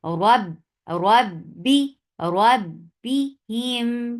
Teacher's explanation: You're not giving too much pressure on ba, otherwise it will sound like P of Pakistan, like p sound. No, it's not p sound, it's b sound.